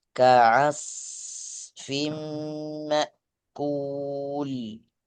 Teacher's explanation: ka langsung diputus. Biarkan anginnya keluar.